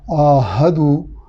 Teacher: दाल की पेश के बाद चूँकि वो साकिन है यानी हर्फ मद्दा है तो पेश को 1 अलिफ के बराबर लंबा अदा करेंगे।